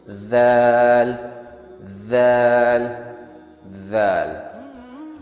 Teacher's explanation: زبان کے ٹپ کو آگے والے اوپر کے دانتوں کی جو نوک ہے اس پر لگا کے ہم ذال کو ادا کریں گے